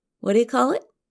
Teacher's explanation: We change the three words, what do you, to whatia when we speak quickly. Whatia means what do you?